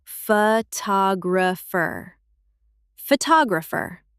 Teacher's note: Photograph, >> but photographer. The stress moves to the second syllable.